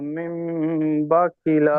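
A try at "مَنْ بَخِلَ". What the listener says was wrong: মিম নেই, ও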